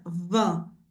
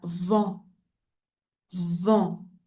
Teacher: eu falo de uma forma bem anasalada